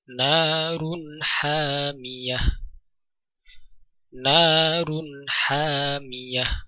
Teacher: Tanwin pada huruf ro, kemudian setelahnya jatuh huruf ha, sehingga bunyi tanwin pada huruf ro atau bunyi nun sukun, suara nun sukun dibaca dengan jelas atau disebut dengan bacaan idhar.